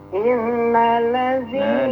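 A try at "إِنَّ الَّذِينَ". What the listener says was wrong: Dengungnya lamaan dikit. Dengung kan? Nun bertasdid sama mim bertasdid dengung. Nah, selain nun dan mim bertasdid semuanya ditekan. Innallazi.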